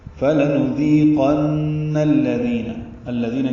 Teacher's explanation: دی یا مدہ ہے، 2 حرکات لمبا کریں گے،